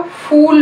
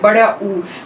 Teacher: देखिए यहाँ पे ये है हमारा वोवल टंग के बैक पार्ट में, तो हम इसको देते हैं इसका नाम, अब ये है हमारी क्लोज पोजीशन पे, बिल्कुल जो ऊपर क्लोज पोजीशन है वहां पे, तो this is back rounded vowel एट close position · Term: बैक क्लोज राउंडेड वोवल